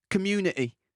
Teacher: Voilà, on enlève le T, ça fait tout de suite populaire. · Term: accent populaire